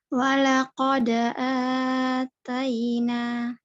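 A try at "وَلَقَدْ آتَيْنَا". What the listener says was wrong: Terlalu panjang, Kak, untuk A-nya. Jadi seperti biasa, baca seperti biasa untuk 2 harokat. Walaqad atayna. Walaqad atayna. 1, 2, ya.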